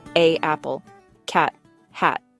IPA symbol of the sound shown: æ